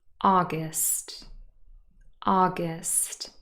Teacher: august august stressed on the first syllable